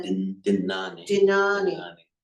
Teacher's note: I want to say Dinyani. It's an ordinary dental N.